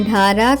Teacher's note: డిఆర్ యొక్క శబ్దం డర కాకుండా డ్ర అవుతుంది.